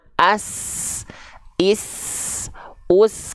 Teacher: keluar percika nafas ak ak ak kalau tadi kan as misalnya sin dia mengalir nafas dan mengalir suaranya bersamaan